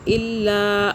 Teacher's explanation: لام کی دو آوازیں ہیں کیونکہ تشدید ہے، پھر لا کرنا ہے، الا، زور سے طاقت سے پڑھنا ہے۔